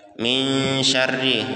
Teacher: ini hukumnya ikhfa, berdengung, ditahan dan 2 harokat.